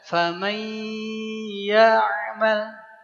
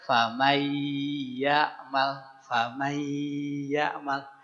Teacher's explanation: Kemudian bi gunnah dileburkan ke ya dan memakai gunnah. Jadi ketika meleburkan ke ya, dengungkan ya, dengungkan dengan memakai rongga hidung kita. Maka baca famay ya'mal tidak cukup dengan famay ya'mal, tapi famay, masukkan ke rongga hidung, didengungkan. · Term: idgham bi gunnah